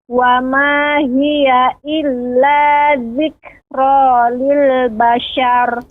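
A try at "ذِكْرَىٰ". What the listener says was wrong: Ra-nya lebih sedikit getarannya. Illa dzikra, ya.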